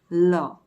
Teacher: લના ઉચ્ચારણ વેળા જીભ દાંતને સ્પર્શે છે. ઉચ્ચારણ કરી જુઓ, લ. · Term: પાર્શ્વિક વ્યંજન